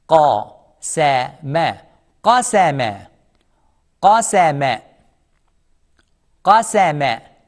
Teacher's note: Qaf is heavy, no smile. Sin is soft, smile. Mim is soft, smile.